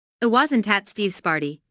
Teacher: Notice that the emphasis here is on at, although prepositions normally have weak stress.